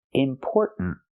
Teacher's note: It sounds like important, important, but there's a stop T at the end